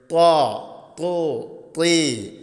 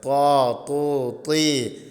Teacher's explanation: നാവിന്റെ തല മേൽ മുൻപല്ലിന്റെ മുരട്ടിലാണ് തട്ടേണ്ടത്